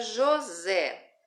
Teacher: a sílaba átona é só Jo, porque só tem duas sílabas. A sílaba tônica é o Zé